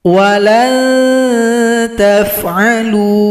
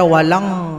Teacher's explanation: bunyi n-nya diarahkan ke huruf Ta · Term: ikhfa Hakiki